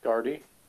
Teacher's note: to me, the T and the D sound exactly the same.